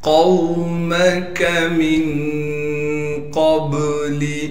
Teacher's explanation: میم کو بغیر کھینچے پڑھیں گے، کاف کو باریک کر کے پڑھیں گے۔ میم کو آگے نون ساکن سے ملا دیں گے غنہ یعنی اخفا یعنی غنہ کے ساتھ۔ · قاف کو موٹا کر کے پڑھیں گے اور قاف کو آگے واو ساکن سے ملا دیں گے۔ میم کو بغیر کھینچے پڑھیں گے، کاف کو باریک کر کے پڑھیں گے۔